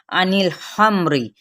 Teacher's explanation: अनिल हमरी खापुर पढ़ा जाएगा, री बारीक पढ़ा जाएगा